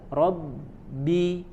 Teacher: ditekankan di huruf ba ya terjadi benturan antara dua unsur makhraj asyafatan